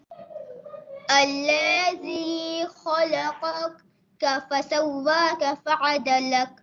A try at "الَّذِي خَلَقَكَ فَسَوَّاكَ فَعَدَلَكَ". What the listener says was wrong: स्पीड नहीं लगानी बेटा. الذي خلقك فسواك فعدلك.